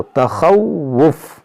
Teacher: یہاں پر واو مشدد ہے، تو اس کو آپ 2 بار ادا کریں، اس واو کو، تخوف، اس طرح سے.